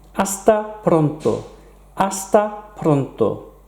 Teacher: We don't pronounce the H in Spanish